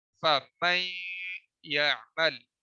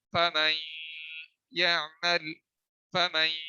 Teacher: آواز کو ایک تو ناک میں لے جائیں گے، دوسرا اسے 1 سیکنڈ کے لیے دبا دیں گے۔ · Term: غنہ